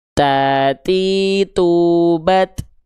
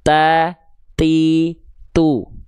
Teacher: persentuhan antara ujung lidah kita ke pangkal gigi seri atas kita. Ujung lidah kita ke pangkal gigi seri atas kita. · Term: huruf ta